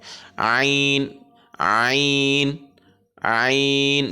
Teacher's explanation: শ্বাসনালীর যে ঢাকনা আছে সেই ঢাকনাটা চেপে দেবে শ্বাসনালীর সাথে খাদ্যনালীর সাথে তখন চেপে গিয়ে আইনটা উচ্চারিত হবে আইন আইন আইন চার থেকে ছয় হলে পরিমাণ টেনে পড়তে পারি